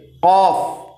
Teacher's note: तालू के नर्म हिस्से से कफ अदा करते हैं